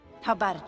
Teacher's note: the word about loses its uh sound in the beginning and the word how forms one chunk with the rest of